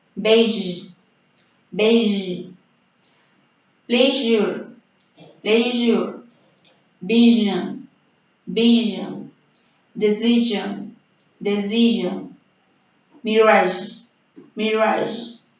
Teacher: This sound has the same articulation as the previous sound. It is articulate when the tongue approaches the palatal and the tip of the tongue is positioned behind the alveolar. Vibration is added. Well, regarding the position of the lips, they are in the same position as the previous sound. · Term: voiced fricative alveolar palatal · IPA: /ʒ/